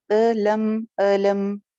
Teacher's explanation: ہم کی میم کو ہلانا نہیں ہے، کلکلا نہ ہونے پائے. الم، سنگل حرکت ہے اور اینگل اس کا نہیں کرنا. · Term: میم کو جما کے